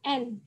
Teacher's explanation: menirukan lidah yang menyentuh bagian pangkal gigi atas seperti ini huruf N kalau kita mengucapkan n nah lidah kita